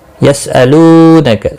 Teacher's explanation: لو و مدہ ہے، ایک الف کے برابر کھینچ کر پڑھیں گے